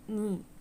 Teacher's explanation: when we say the vowel sound e, like in the word knee, we see here that our lips are unrounded